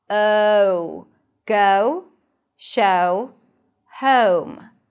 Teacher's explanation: In British English, the first sound is actually a schwa. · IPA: /əʊ/